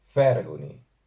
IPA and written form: 'ɸɛr.gu.ni (FAÍRGUNI)